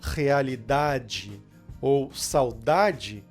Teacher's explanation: a letra e no final de uma palavra ela sempre tem o som de i Claro quando ela não tiver o estresse